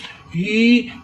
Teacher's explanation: یہ ہا جو ہے یہ سینے کے جوڑ سے ادا کریں. ہی مگر میم ساکن ہے, اس کو ہا کو میم کے ساتھ ملائیں گے.